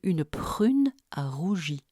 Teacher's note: Au niveau uvulaire, le rapprochement du dos de la langue et de la luette produit 2 des 3 R du français, ceux de une prune à rougi.